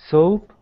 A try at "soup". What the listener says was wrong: And just be careful when you're pronouncing the word soup, that it really sounds like soup and not soap, because those are two very different things.